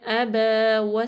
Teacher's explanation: با پہ فتح اشبائی ہے، اس کو اتنا لمبا کریں گے الف مدہ کے برابر ، یعنی کہ الف زائدہ ہے، واو کو سین